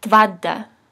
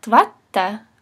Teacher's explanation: when you just have one T in between two vowels, between the two A's, it shortens to a D type sound, like as if it's voiced. Tvada.